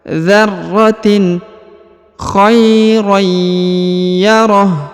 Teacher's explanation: Perhatikan khaira, huruf ra bertanwin, berharokat tanwin, bertemu dengan ya berharokat tasdid, maka huruf ra-nya ditahan dan ditekan, dan huruf tanwinnya menghilang melebur masuk ke huruf ya